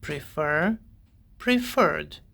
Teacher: For example, the verb prefer has two syllables. The stress is on the second syllable, and the verb ends in one short vowel and one consonant. So to form the past participle, we double the final consonant and add ed.